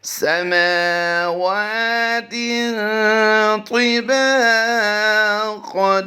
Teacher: تا اور طا کی ادائیگی میں ہم نے فرق کر کے اسے پڑھنا ہے، دونوں ہم آواز حروف بالکل ساتھ ساتھ آ گئے ہیں، ان کی ادائیگی میں فرق ہونا چاہیے۔